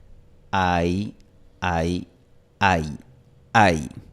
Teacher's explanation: En este diptongo, la vocal A es más fuerte, es el núcleo del diptongo. Y la vocal I se convierte en una semivocal, se convierte en un glide, una deslizante. Por eso, en símbolos fonéticos se escribe con esta J. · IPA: [aj]